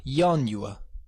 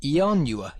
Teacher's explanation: sometimes the Latin I could be a consonant Y sound, like in yanua, and at other times I would be a vowel sound.